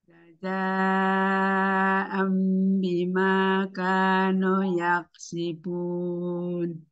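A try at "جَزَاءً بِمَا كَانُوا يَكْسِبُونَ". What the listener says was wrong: Tadi madnya kurang panjang ya, kanu, jadi ka dengan nu sama panjangnya. Kemudian di jazaa'an idgham atau ifa itu di apa?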